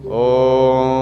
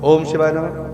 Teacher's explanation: दीर्घ ओम, कुछ देश में कुछ महात्मा कथावाचक ऐसे भी लोग हैं जो मंच पर बैठ करके दीर्घ ओम का उच्चारण करते हैं, जैसे ओम, ये दीर्घ ओम हो जाता है। और ओम शिवाय नमः ह्रस्व ओम हो गया